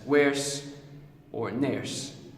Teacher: in words like worse and nurse, we get a change in vowels that resembles more of the vowel sound of hair. So worse and nurse will be pronounced as werse or nurse.